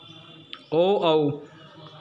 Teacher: कंठोष्ठम कंठ प्लस ओष्ठ, गला और होठ दोनों को संयुक्त रूप से प्रयोग करते हुए दोनों संयुक्त स्थान है। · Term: कंठोष्ठीय वर्ण